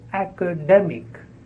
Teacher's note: and the stress is on the second syllable